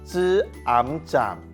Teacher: 这个音嘴唇有合起来，所以韵尾要写▁m